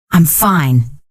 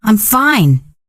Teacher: Same words but very different feelings. The first one sounds flat or tired. The second one sounds happy and excited.